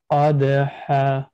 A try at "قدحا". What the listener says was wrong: Now you made the light qaf also. قد.